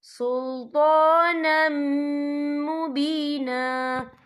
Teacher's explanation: اتریدون ان تجعلوا للہ علیکم سلطانا مبینا، یا دیکھیں سلطانم، نم، یہاں نون کے اوپر تنوین ہے، تنوین کے بعد جو ہے میم آ رہا ہے، اور میم جو ہے حروف یرملون میں سے ہے، تو یہاں پر ادغام ہوگا، تو ہم اسے غنّے کے ساتھ پڑھیں گے۔